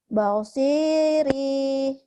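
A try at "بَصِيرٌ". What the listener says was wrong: Pendek ujungnya. Shotnya doang. Dihentikan jadi.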